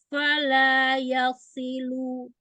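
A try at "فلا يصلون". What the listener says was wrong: ya nggak boleh naik.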